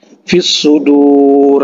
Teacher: huruf alif lam yang tidak dibaca, ya, karena dia bertemu dengan huruf syamsiyah. Jadi huruf alif lamnya ada tapi tidak dibaca, itu bahasa sederhananya, ya.